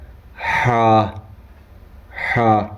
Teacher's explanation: حلق کے بیچ سے ادا ہوتا ہے ہا